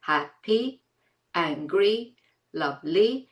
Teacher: they have two syllables: hap-pi, an-gry, love-ly, because the last sound is /i/